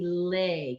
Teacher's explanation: giving a little bit more length to that l sound